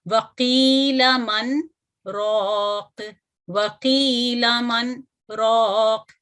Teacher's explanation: तो इसकी एक मिसाल सूरह अल क़यामा की इस आयत में है, और यहाँ पर क्या करते हैं कि इसको एक छोटा सा वक्फ होता है यहाँ पे बगैर सांस तोड़े हुए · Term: सक्ता